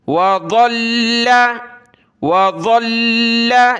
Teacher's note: لام کو سخت کیا، ضاد کو موٹا کیا